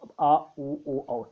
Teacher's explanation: पश्च स्वर जो है ये जीवा का पश्च भाग उठता है